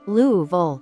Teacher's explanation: the name kind of rolls together almost like one sound